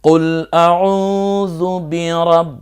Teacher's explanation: শেষে সটা একটু দাঁতের ফাঁক দিয়ে, অর্থাৎ সিনটা একটু সি সি আওয়াজে বের হয়ে যাবে, যেমন সাইকেলের পাম্প ছেড়ে দিলে যেমন আওয়াজ হয়, অথবা যদি বলি প্রেসার কুকারে যে আওয়াজ দেয় যেভাবে, একটু চেষ্টা করা।